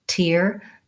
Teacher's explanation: is a clear aspirated T I do release that I should have a puff of air